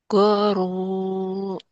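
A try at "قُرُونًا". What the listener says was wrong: Kurunan. Kuru. Ku. K. Q. Ku. Bukan G tapi Q ini mah. Kuru. Kurunan ini nun. Kurunan.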